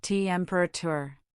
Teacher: temperature has stress on the first syllable